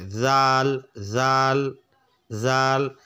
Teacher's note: যেরকম যার উপরে খারা জবর রয়েছে তাহলে বলবো জা। আর জালটা উচ্চারণ নরম করে জিব্বার আগা ওপরে দুইটা আগার সঙ্গে লেগে জিব্বাটা বের করে দিতে হবে